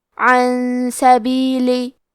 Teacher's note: کلمت عن کے آخری میں نون ساکن ہے، پھر حرف السین آتا ہے کلمت سبیلی. سین حروف الاخفاء میں سے ہے لہذا ہمیں یہ حکم کو غنہ کے ساتھ ادا کرنا ہے